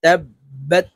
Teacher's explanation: তাসদিদওয়ালা হরফ দুইবার উচ্চারণ হবে, একবার পূর্বের হরকতের সঙ্গে আরেকবার নিজ হরকতের উচ্চারণ হবে। তো এখানে তাসদিদওয়ালা হরফটি হলো বা।